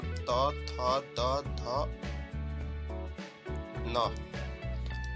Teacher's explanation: त थ द ध न, तथा न, ये जितना है इन सब का उच्चारण दंत से होता है। याद रखिएगा।